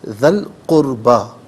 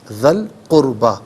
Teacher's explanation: ذال پر جو زبر ہے اس سے القربہ کی لام ساکن کے ساتھ ملائیں گے اور درمیان میں سے الف یعنی حمزہ کو حذف کیا جائے گا. اسے ہم پڑھیں گے ذل قربہ.